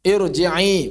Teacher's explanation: Bahkan ada juga yang berhubungan dengan kasroh tapi tebal. Ro tebal yang berhubungan dengan kasroh.